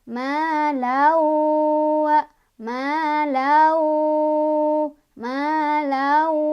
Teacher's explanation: Di sini ada idgham bi gunnah karena ada tanwin fathah bertemu dengan huruf idgham bi gunnah yaitu wawu. Cara bacanya tanwin fathahnya dimasukkan ke huruf wawu sambil berdengung.